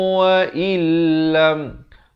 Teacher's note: Nun mati bertemu lam. Idgham bila gunnah. Masuk tanpa dengung.